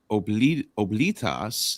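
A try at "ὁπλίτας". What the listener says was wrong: Now this is a rough breathing here, which I don't pronounce, but if you want to pronounce it, it's hoplitas, right? It is hoplites, yeah.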